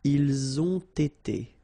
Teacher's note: You get first the liaison z and then you get the t.